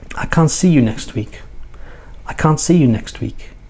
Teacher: Semi-weak, the pronouns I and you, and then everything else is very strong. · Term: weak forms